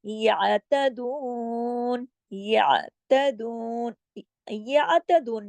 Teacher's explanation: جماؤ کے ساتھ آپ نے عین کو پڑھنا ہے کیونکہ عین کے پاس حرکت نہیں ہے، عین جزم کے ساتھ ہے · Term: عین ہے جزم کے ساتھ